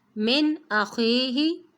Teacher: نون ساکن کے بعد حروف ہلکی میں سے حمزہ ہے تو نون ساکن پر اظہار کریں گے، غنہ نہیں کریں گے